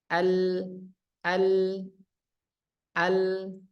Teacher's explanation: tawasut dia ini pertengahan tidak hilang seperti Hamzah tapi tidak mengalir seperti ha juga